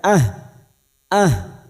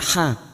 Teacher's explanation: huruf ha sukun yang harus ada tenaga pada saat membunyikan